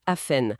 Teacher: Historiquement, le T était muet, on disait afen. Aujourd'hui, surtout aux États-Unis, on entend de plus en plus le T.